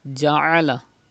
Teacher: Pronounce Ain from the middle part of your throat